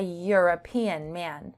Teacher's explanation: The word European has a Y sound, much like year or you.